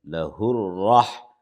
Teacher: رائے مشددت پر زبر ہے تو اس لیے را کو موٹا پڑھیں گے